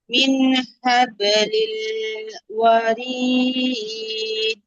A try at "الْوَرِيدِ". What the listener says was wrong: ওয়ারিদ, দালে ধাক্কা হবে, হ্যাঁ।